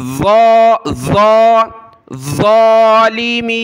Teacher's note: میم کو یا کی طرف کھینچنا ہے، مد ہے